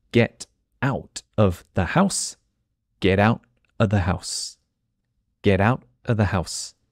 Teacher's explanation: so the T becomes a d